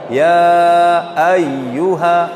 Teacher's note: huruf hamzah ini mempunyai sifat namanya syiddah